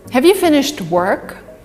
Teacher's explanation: the emphasis is on work here and have is weak